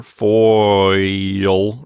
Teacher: we have aw and e, and we glide from one to the other